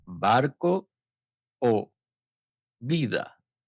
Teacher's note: La B y la V. Ambas se pronuncian de la misma manera. No existe distinción entre ellas en español, lo cual sorprende a muchos estudiantes.